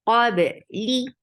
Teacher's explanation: Ba will get sifa of qalqala.